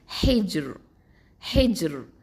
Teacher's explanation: வக்ஃபு பண்ணும்போது ஹெஜ்ர் அப்படின்னு சொல்லி தர்கீக்காக தான் ஓதுவோம்.